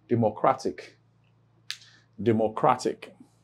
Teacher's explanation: So for instance, here is the last syllable, and this is second to the last syllable. So you have the stress placed on second to the last syllable. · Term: penultimate syllable